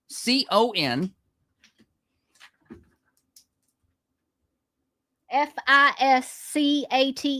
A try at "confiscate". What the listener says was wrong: You're putting an N after the S or the confiscate. It's confiscate.